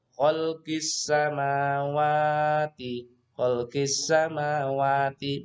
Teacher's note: Alif lam syamsiyah ya. Jadi ada alif lam berhadapan dengan sin, maka alif lam ini tidak terbaca. Yang terbaca adalah sin yang bertasydid ini.